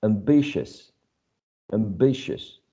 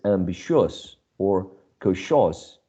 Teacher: this uh cluster of vowels right i owe you in all of these words is reduced to a schwa if you uh pay attention this last syllable is never stressed